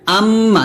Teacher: মিম যখন গুন্না করবেন দুই ঠোঁট মিল করে গুণনা করবেন